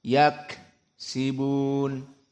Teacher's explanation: kafnya di sini dalam keadaan disukunkan dinamakan dengan al-hams